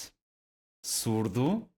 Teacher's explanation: same thing the difference is here this one is silent s so there's no vibration in our vocal cords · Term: voiceless